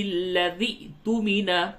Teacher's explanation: لذی ذال حمزہ زیر ذی، اس جگہ پہ جھٹکا ہوگا